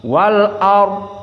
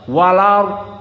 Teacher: Lam sakinah bertemu dengan hamzah, hamzahnya dihapuskan, maka harokat hamzah al a fathah itu disisakan, dinaql. Inilah kenapa ada istilah naql, dinaql, dipindah kepada lam.